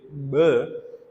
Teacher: we actually take air in instead of pushing it out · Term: ingressive sound